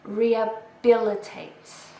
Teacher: We stress the third syllable.